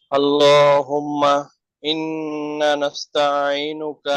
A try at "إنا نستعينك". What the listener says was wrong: ইন্না টান হবে। না, টান হচ্ছে না। গুন্না হচ্ছে কিন্তু টান হচ্ছে না। আপনি ইন এটা হচ্ছে কি গুন্না, আর না এটা হচ্ছে টান। নাস্তাঈনুকা নাস্তাঈন তায়াতে একটু টানের ভাব চলে যায়, টানের ভাব আছে।